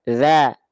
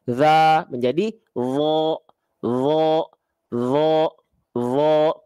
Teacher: Za, mulutnya terbuka, aulang terbuka, za, za, za, za. Kalau huruf dha buka mulut tanpa senyum. Za, tinggal angkat bagian pangkal lidah. Za menjadi wo, wo, wo, wo.